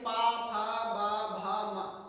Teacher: ये हमारे जो होठ होते हैं एक बार जरूर टच करेंगे। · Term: ओष्ठ व्यंजन